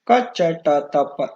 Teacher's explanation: ಇವುಗಳು ಅಘೋಷ ಸ್ಪರ್ಶ ಧ್ವನಿಗಳು. ಕಂಠ್ಯ ಅಘೋಷ ಸ್ಪರ್ಶ ಧ್ವನಿಗಳಾಗಿರ್ತವೆ.